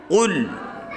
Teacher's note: Kemudian pangkal lidahnya itu naik. Qul, tebal. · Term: qaf